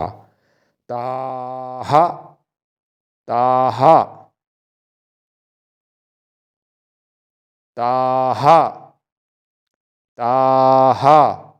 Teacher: जो विसर्ग वाला है उसमें ता के बाद हा बोला जाएगा हा ह ह पे आ की मात्रा हा ताहा ताहा ताहा